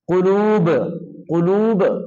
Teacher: तो मोटा करके पढ़ना है कुल काफ मोटा करके पढ़ेंगे